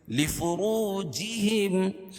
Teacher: واو ساکن سے پہلے را کے اوپر پیش ہے تو واو مدہ، اس کو ایک الف کے برابر کھینچ کے پڑھیں گے